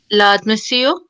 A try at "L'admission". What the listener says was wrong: fantastic.